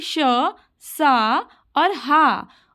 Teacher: इनके अंदर श्वास की पूरी तरह से रुकावट नहीं, बल्कि किसी स्थान पर हल्का संकुचन है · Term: संसर्ग